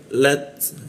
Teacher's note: ujung lidah ditempelkan ke gigi ada desis tipis ya atau bocor halus dia. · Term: huruf ta dimatikan